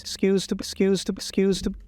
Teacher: It's almost devoicing, but you're still getting this zed kind of feel to it.